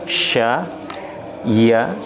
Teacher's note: kita bahas sya sya itu ada di tengah-tengah lidah bunyinya kemudian huruf ya juga itu ada di tengah-tengah lidah Jadi bukan di ujung lidah segi Bukan tapi ada di tengah Jadi bukan lebih kita itu